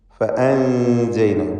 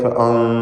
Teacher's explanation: ഇവിടെ സാക്കിനത്ത നൂനിനെ അവ്യക്തമാക്കി മണിക്കണം. ഇഖ്ഫാ ഹഖീഖി നൽകി മറച്ച് മണിക്കുക. മണിക്കലിൽ തർക്കീഖാണ്.